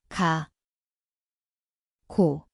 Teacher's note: Ia berbunyi seperti G garis miring K. Tempatnya di belakang lidah. Sekarang tambah dokal dan dengar kau. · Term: kiok, 기억